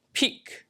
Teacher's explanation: uses a higher vowel, right? Her tongue is in a slightly higher position